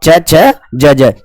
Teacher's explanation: ये स्पर्शी भी होते हैं और संघर्षी भी होते हैं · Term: स्पर्श संघर्षी व्यंजन